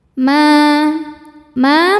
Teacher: Ma ma mad thobi'i zohiri. Karena ada alif didahului fathah maka mimnya panjang dua harakat.